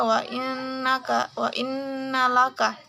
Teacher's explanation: Hukum tajwidnya itu adalah gunnah karena huruf nun tasydid. Cara membaca gunnah yaitu huruf nun dibaca dengung antara 2 sampai 3 harokat